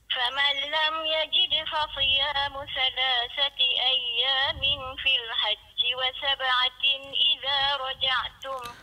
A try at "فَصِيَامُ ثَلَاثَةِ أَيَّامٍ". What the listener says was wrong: Dia dekat ayyamin tu, dengung bagi cukup. فَصِيَامُ ثَلَاثَةِ أَيَّامٍ tu, ayyamin ikhfa kan? Dia cuma kadang-kadang kita terlepas pandang. Dia kena dengung sikit kat situ.